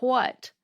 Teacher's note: people sometimes pronounce the word what like it has an H at the beginning